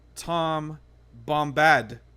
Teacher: pronounce his name as Tom Bombadil, with the emphasis on the Bombad